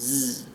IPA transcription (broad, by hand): z